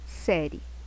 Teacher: ela é um ditongo crescente porque ela vem do menor para o maior que ela começa com uma semivogal e vai para a vogal